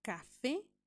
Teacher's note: tiene sílaba tónica o acento en la e o acento en la última sílaba